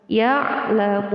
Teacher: Mun adalah hukum bacaan mad, yaitu mad arid dari sukun. Panjangnya 1 alif, 2 alif sampai 3 alif.